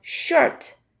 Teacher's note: It's like the Chinese R. It's also a retroflex sound, meaning you have to curl the tip of your tongue backwards. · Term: Chinese sh